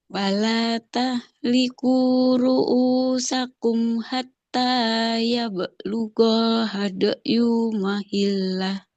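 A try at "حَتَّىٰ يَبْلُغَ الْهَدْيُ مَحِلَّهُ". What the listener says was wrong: Nah, panjang pendeknya. Hatta ya belughal. Nah, ada lam sukun ya setelah ghainnya. Hadayu, ya-nya nggak boleh panjang. tahliqu ru'usakum hatta ya belughal. Nah, hatta ya belughal hadayu mahillah.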